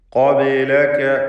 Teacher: ബാഇൻ്റെ സുക്കൂൻ ഖൽഖല സൂറ നൽകി ശബ്ദം ഹറക്കത്ത് പോലെ ചലിപ്പിക്കണം.